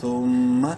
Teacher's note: ثا میم پہ ثم، میم مشدد ہے، غنہ کریں گے. میم زبر ما، ثم.